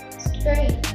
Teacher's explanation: three consonant sounds, namely voiceless alveolar fricative, voiceless alveolar stop, voiced alveolar approximant, and one vowel sound, namely diphthong, mid-front unrounded vowel plus tense high front unrounded vowel.